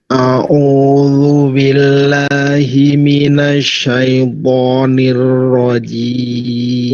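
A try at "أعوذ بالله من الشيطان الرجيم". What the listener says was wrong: Nirnya masih kurang tebal. Nir. Lihat mulut saya. Nir rajim. Nir rajim. Nir rajim. Nir rajim. Tadi kurang tebal. Jadi nir rajim. Jadi rohnya langsung dibaca tebal.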